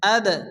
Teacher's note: দাল সাকিন, দাল কলকলা অক্ষর হালকা ধাক্কা দিয়ে পড়তে হবে